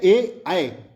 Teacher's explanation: कंठ और तालु में जीभ के स्पर्श से बोले जाने वाले वर्ण हैं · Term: कंठ तालु